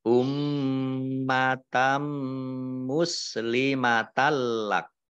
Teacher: Ummatam mim tasdid, ya, dibaca gunnah atau mendengung, ditahan 2 harokat. Tak fathah tanwin bertemu dengan huruf mim, bacaan idgham bi gunnah. Idgham masuk bi dengan gunnah mendengung. Mendengung mim ditahan 2 harokat.